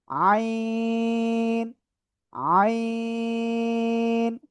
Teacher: এই গলাটা চেপে আমরা এটা উচ্চারণ করব। গলাটা চেপে আমরা উচ্চারণ করব এবং এই অক্ষরে 4 আলিফ টেনে পড়তে হবে।